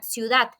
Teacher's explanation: la palabra ciudad, su sílaba tónica está en la última sílaba y no marcamos tilde porque no termina ni en N, ni en S, ni en vocal. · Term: palabras agudas